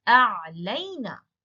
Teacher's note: So you see the lam with fatha is still there, and the ya came, the ya and noon, the suffix came, and now the ya is no longer the long vowel ya.